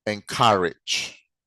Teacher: it is stressed on the second syllable